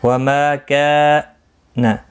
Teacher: ما الف مدہ ہے، کا الف مدہ ہے، دونوں کو ایک ایک الف کی مقدار کے برابر کھینچ کر پڑھیں گے